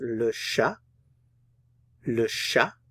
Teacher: I'm not pronouncing the T at the end.